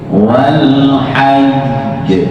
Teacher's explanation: Wal hajj ditekan tapi bukan wal haj itu naik tadi. Tidak boleh ada suara naik karena jim itu qalqalah.